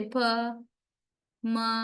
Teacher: Both upper and lower lips are brought together. They tightly touch to each other and block the airream. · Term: bilabials